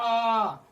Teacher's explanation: अगर हम दीर्घ स्वर को बोलेंगे तो उच्चारण में 2 गुना समय लगता है